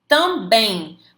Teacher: Quando você fala também, você tem o que escondidinho ali? Um I, certo? Você tem o I escondido ali.